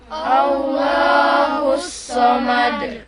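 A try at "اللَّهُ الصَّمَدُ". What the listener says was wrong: Sod ya, jangan kesin ya. Allahus sod. Allahus somad.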